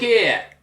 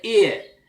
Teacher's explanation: They don't pronounce the H normally in Cockney language